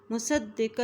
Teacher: صاد کی زبر کو دال کے ساتھ ملا رہے ہیں کیونکہ دال کے اوپر شد ہے